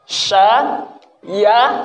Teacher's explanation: Huruf sya itu kan makhrajnya dari tengah lidah ya. Dari tengah lidah ketemu langit-langit kalau di makhraj itu.